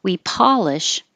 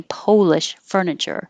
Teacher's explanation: the po is like going to sound like paw when it's the action we polish and then polish the the stress stays on the